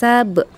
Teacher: Sab itu disebut dengan qalqalah sugro, qalqalah kecil ya, karena berada di tengah-tengah kalimat, dia dibaca memantul